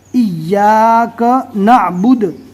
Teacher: دال کے پیش کو رکنے کی حالت میں جزم سے بدل دیں گے